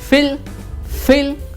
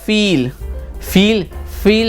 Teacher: अगर हल्का किया, फिल किया तो भरने वाला, और लंबा खींच दिया, फील कर दिया तो ये महसूस करने वाला हो जाएगा